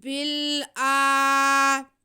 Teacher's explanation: हमज़ा पे खड़ा ज़बर है, हम उसे खींच लेंगे एक अलिफ के बराबर